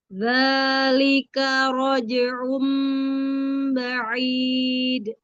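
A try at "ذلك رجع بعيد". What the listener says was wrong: K-nya jangan K gitu, jangan jelas-jelas, langsung disambung aja. Dzalika raj'un, lembut aja K-nya K. Dzalika raj'un. Jadi bukan dzalika gitu enggak.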